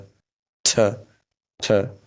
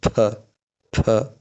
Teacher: We feel a stronger puff of air in sound। अब हामी यो स्ट्रङली एकदम फोर्सफुल हावा बाहिर आएको फिल गर्छौँ रे यी साउन्डहरूमा। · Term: फोर्टिस कन्सोनेन्ट